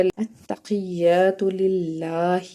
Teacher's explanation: وہ حرف حلقی ہے، حلق کے درمیان سے اس کو ادا کریں گے، اور الف سے پیچھے زبر ہے التحیہ میں، تو اس کو ہم نے ایک الف کے برابر کھینچ کے پڑھنا ہے، التحیہ، تاپشتو، التحیات۔ لام لفظ اللہ کے لام کے نیچے زیر ہے، اس لیے اس کو ہم نے نرمی سے ادا کرنا ہے، اور لام کے اوپر کھڑا زبر ہے، اس کو ہم نے ایک الف کا برابر کھینچ کے پڑھنا ہے، التقیات للہ۔